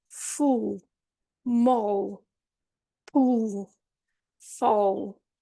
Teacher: before the the top teeth but the difference here is that the tongue does not release and it feels as if the tongue is receding further into your mouth into your throat almost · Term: dark L